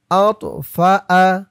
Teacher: এই তোয়াটা হচ্ছে কলকলার হরফ, ধাক্কা দিয়ে পড়তে হবে